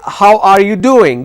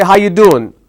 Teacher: If you go to the east coast, which is New York region, they don't say how are you doing. They say how you doing.